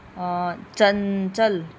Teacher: जिसे नाक से वायु बाहर आती है। नाक से बोले जाते हैं। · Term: अनुस्वार